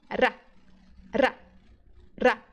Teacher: Só que não precisa ser tantas vezes. Com 3 ou 4 vezes de vibração, você já consegue pronunciar o R. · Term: R vibrante